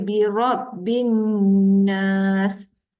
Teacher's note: Jadi kalau nampak mim sabdu, nun sabdu, ingat kena dengung. Dengung kat hidung, bacaannya 2 harakat